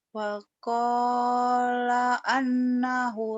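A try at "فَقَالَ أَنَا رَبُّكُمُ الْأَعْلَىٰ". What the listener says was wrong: pendek, ananya nggak ada tasid. Faqala ana rabb.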